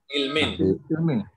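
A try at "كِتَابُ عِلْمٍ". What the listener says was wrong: Nah, kitabu ilmin. Dibaca kitabu ilmin.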